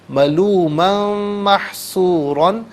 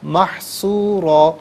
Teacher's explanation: یہاں پر یرملون کا جو قاعدہ وہ اپلائی ہوگا، ملومن محصورہ نہیں، ملومن محصورا، 2 زبر کی تنوین ہے، را کو پر کر کے پڑھیں گے، اور وف کی صورت میں الف سے چینج کریں گے 2 زبر کی تنوین کو تو اس وقت بھی را کو پر کر کے پڑھا جائے گا، محصورا۔